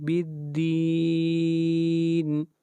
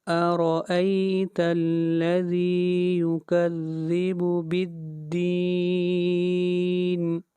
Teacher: بالدین کے اوپر مد عارض ہو رہی ہے، اس مد کو 3 الف کے برابر کھینچ کر پڑھیں گے